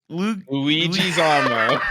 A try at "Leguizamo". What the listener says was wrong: Wrong on the first syllable.